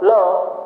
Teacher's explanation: तालु में स्पर्श करेगी और बगल से हवा, किनारे से हवा जाएगी। पार्श्विक व्यंजन की संख्या 1 ल।